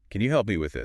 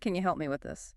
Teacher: can you often reduces to a quick can ya? And help me kind of links together. The P sound might be soft, so it sounds almost like help me.